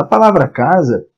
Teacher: A palavra casa, se eu perguntar a você qual é a sílaba tônica, sílaba mais forte da palavra, você rapidamente vai dizer: ah, a palavra tem a sílaba tônica cá